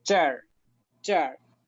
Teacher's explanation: En chino, en este caso, los del norte añaden mucho la R al final de las palabras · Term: añadir una R